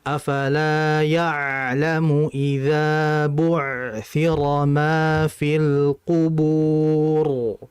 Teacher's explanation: Sukoon ain memiliki karakteristik yang disebut tawassut. Tawassut artinya mengalir, ya. Ia mengalir sesaat. · Ain mati itu punya sifat namanya tawassuto. Tawasut itu ngalir ya. Ngalir sebentar.